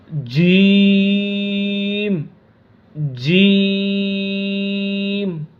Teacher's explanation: زبان کے درمیان اور اوپر کے تالو کے درمیان سے